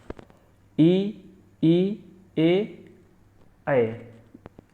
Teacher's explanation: इ ई ए यह तालू से बोले जाते हैं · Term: तालव्य स्वर